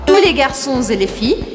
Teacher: eu não falo o S, porque a palavra que vem depois começa com uma consoante.